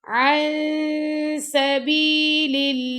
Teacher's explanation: नून साकिन के बाद आ गया हमारे पास सीन तो यहां पे हम इफा करेंगे